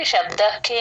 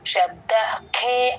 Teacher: మాత్రమే మహాప్రాణం లేదు గమనించండి శబ్ద పక్కన విసర్గ హెచ్ సౌండ్ లాగా రాసేసుకోండి క ముందు ఎప్పుడు విసర్గ వచ్చినా క ఖ ముందు హెచ్ హెచ్ సౌండ్ లాగా చెప్తాం